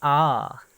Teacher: वे स्वर जिनके उच्चारण में मुख द्वार पूरा खुलता है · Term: विपरीत स्वर